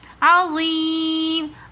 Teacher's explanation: عظیم میں یہ مدہ کے بعد میم ساکن آ رہا ہے تو اس لیے ہم نے اس کو عظیم تھوڑا سا کھینچ کر پڑھا